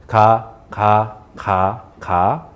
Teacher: So you base off of ka, and then you make it a little bit more aspirated. So by that I mean you add a little bit more air and explosion.